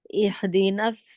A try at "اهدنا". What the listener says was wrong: ہا کو ہلانا نہیں ہے، ہا کے مخرج سے آ رہے ہیں باہر آپ، اے ہولڈ کر کے، جیسے غین کو ہولڈ کرنا تھا نا،